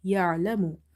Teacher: This ain is from the middle of the throat.